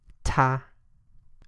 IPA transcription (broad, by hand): tʰ